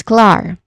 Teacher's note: Now, clar, the first syllable, it starts with a consonant cluster of the consonant sounds that K and L makes, and then followed by a short A vowel sound and ends with a letter R sound.